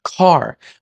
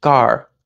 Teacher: in Spanish they don't aspirate a c · example in English we usually aspirate word initial voiceless explosives so C at the beginning of a word has a little extra puff of air to it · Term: aspiration